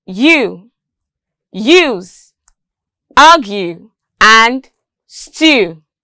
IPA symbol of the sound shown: j